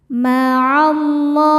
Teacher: Lam jalalah dibaca secara tafkhim karena sebelumnya barisnya fathah. Cara bacanya lam dibaca tebal.